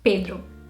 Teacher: It's a very closed E sound